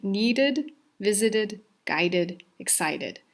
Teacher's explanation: These are all ones that when we add the d or the ed to the ending, it will sound like the id.